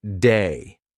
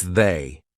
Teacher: The voiced TH, lots of English learners will pronounce it like a D. So instead of saying they, they'll say something like day.